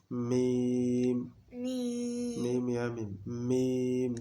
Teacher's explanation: দুই ঠোঁট হইতে, হ্যাঁ মিম উচ্চারিত হয়